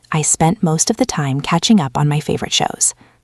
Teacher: You notice how the words spent and most time all flow together.